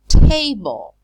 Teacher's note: We know that that t has to be aspirated.